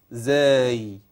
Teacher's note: والزاي طرف اللسان ما يطلعش فيها